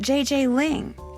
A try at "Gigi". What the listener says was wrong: En français, you pronounce G like J and J like G. She may very well be JJ in America, but in France, she is Gigi.